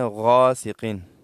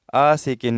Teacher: یہ غائن ہے نقطے والا، یہ غائن میں موٹا پڑھا جائے گا، مفخم پڑھا جائے گا، اس میں تخفیم ہے